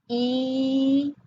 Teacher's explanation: the [I] sound, which is in the high front part of our mouth · So let's do all 3 of those sounds in that order and feel the shift in your mouth from going to high front, so almost closed, right, to open in the back